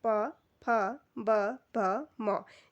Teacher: इन सबका उच्चारण करते समय जो हमारा स्पर्श रहता है हमारे जो दोनों होठ हैं वो आपस में क्या होते हैं स्पर्श करते हैं तो प फ ब भ और म तीसरा है अनुनासिक व्यंजन या इन्हें नासिक्य व्यंजन भी कहा जाता है। · पौ वर्ग का जो उच्चारण स्थान है वो ओष्ठ से रहता है।